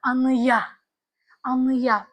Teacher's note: Saitlə başlayan sözlərə bitişdirici y samitini istifadə edəndə, baxın, anaya sözü olur anıya. Buradakı a ı-ya keçir tələffüzdə.